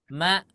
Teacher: Kalau hamzah jangan mengalir. Ma Cukup. Terputus dia karena huruf hamzah sukun ya, itu memiliki sifat apa? Syiddah. Suaranya tidak mengalir.